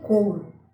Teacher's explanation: a letra U representa um fonema semivocalico pois está apoiada em uma vogal que é o o na mesma sílaba